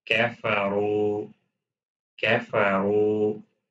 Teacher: Kaf is light, then ra is heavy.